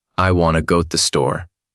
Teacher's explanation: Stress falls on want and store. While other sounds are softer or faster.